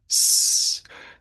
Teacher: because s is not a soft consonant it's a hissing sound